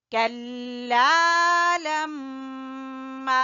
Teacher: میم مشدد کا غنہ اور الف مدہ